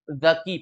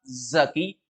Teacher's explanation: Dan kalau cerdas itu zaki pakai zal di ujung lidah makhrajnya